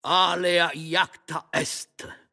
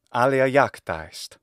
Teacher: Est ought not to be emphasized because alea iacta est means the die is cast.